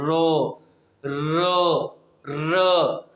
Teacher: प्रकंपित या लुंठित है, इसमें क्या होता है, जब हम बोलते हैं ना तो वायु जीभ से टकरा कर लुढ़कने लगती है, जीभ से टकरा कर लुढ़कने लगती है। जब बोलते हैं तो वायु जीभ से टकरा कर क्या करती है? लुढ़कने लगती है